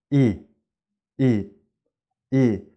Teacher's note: Russian e is something in between its tense but is short · It's tense, but it's short.